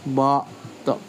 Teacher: you feel your tongue tip making the L sound where the vowel sound should be